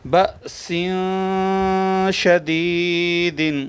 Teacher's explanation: الف پر جب جزم آ جائے تو اس کو جھٹکا دیتے ہیں